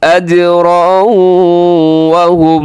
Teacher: ادغام ہو رہا ہے، تنوین کے بعد واو ہے